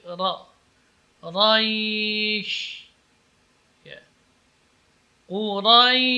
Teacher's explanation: Kemudian ra, di sini setelah ra ada ya yang sukun, maka ini madlin. Tapi pengucapan huruf ra tidak boleh terpengaruh oleh ya, bukan raish, tapi ra.